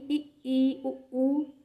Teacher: मुख द्वार जो है वह लगभग बंद होता है, यानी कि थोड़ा सा ही खुलता है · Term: संवृत